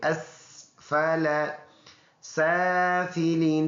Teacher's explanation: سین سیٹی والا حرف ہے